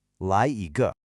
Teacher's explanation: It is a neutral tone. That means it's short, it's unstressed, it's very light. It's not a full syllable, just a quick ge that's attached to the end.